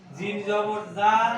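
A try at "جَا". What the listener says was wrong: এখন দেখেন, জিমের পরে একটা আমরা এই আলিফটা লাগাই দিছি না? জিম আলিফ জবর যা, জি। জিম আলিফ জবর যা,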